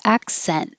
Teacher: by itself you don't need to release the t sound accent hold the t but if there's a word after it